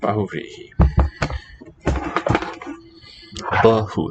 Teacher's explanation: The A, written A is really schwa.